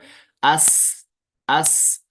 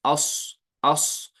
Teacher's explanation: इनको अदा करने का तरीका यह है कि जब इनको अदा किया जाता है तो उसमें मखरज में क्या निकलती है? सीटी जैसी आवाज निकलती है, विसल लाइक साउंड निकलता है · जब दांत दो मिलते हैं तो बाहर निकलता है विसल लाइक साउंड, तेज आवाज निकलती है। इस तरह हमजा सीन जबर अस, अस। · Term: सिफत सफीर